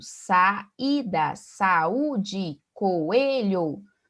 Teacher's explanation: As vogais estão juntas na escrita, mas na pronúncia estão separadas. Então, nós temos o hiato.